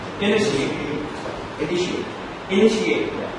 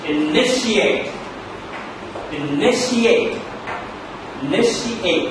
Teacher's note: The stress is falling on NIT.